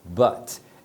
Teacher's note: Então as palavras que terminam em consoante, a letra U vai ter o som de A, but. É um som aqui da garganta, tá? É um A. Procura não fazer o som nasal, porque no português é muito comum a gente fazer o som nasal, então não é assim, tá? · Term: som curto